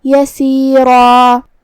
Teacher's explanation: مد الف اپنے پیچھے والے حرف کا حکم لیتا ہے، تو ہم را کو اور الف کو دونوں کو تفخیم سے ادا کریں گے